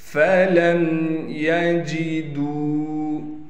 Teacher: اغرقوا فادخلوا نارا فلم یجدوا، فا کو بغیر کھینچے پڑھیں گے، لام کو میم ساکن سے ملائیں گے بغیر غننے کے، یا کو بغیر کھینچے پڑھنا ہے، جیم کو بغیر جھٹکے کے اور بغیر قلقلہ کے پڑھنا ہے، بغیر کھینچے پڑھنا ہے۔ · دال کو واو مدہ سے ملائیں گے اور دال کو ایک الف کی مقدار کھینچیں گے